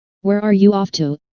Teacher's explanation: notice the falling intonation since this is an information question not a yes or no question